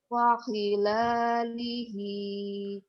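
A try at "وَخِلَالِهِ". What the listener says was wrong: Wa, kedengarannya fa ya. Wa, bukan fa. Wa.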